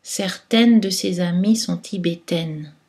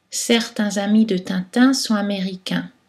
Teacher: la distinction entre les voyelles orale et nasale peut faire la différence entre le masculin féminin